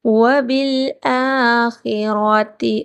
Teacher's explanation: را کو پر موٹا کر کے پڑھا جائے گا۔